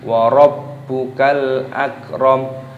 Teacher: Baknya berharokat tasdid, ini dibaca diidghamkan, dimasukkan. Wa rabbukal, ada lam alif, lamnya sukun dibaca wa rabbukal akram.